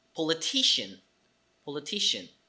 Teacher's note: the syllable T is stressed so that's why the T in front of the e is aspirated